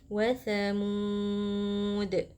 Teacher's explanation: Kita pilih untuk membaca 4 harokat. Kemudian huruf terakhir merupakan huruf qalqalah, jadi kita pantulkan.